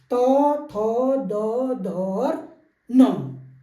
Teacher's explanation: हमने पढ़ा था त वर्ग, जो दांतों जीभ जो है हमारी दांत से टकराती है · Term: दंत वर्ग